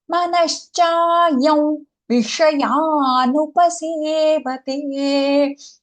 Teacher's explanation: We tend to say it as cha. It is not dental sa, it is palatal sha.